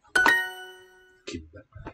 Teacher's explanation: The tongue is in a high position, so it can do a high vowel quite easily.